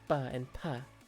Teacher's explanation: bilabial meaning that you have to use both your lips to make the sound